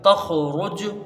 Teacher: تا خا زبر تخ، را جیم پیش رج، تخ رج، را کو پر پڑھیں گے اور جیم میں قلقلہ ہوگا قوی درجے کا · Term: قوی درجے کا قلقلہ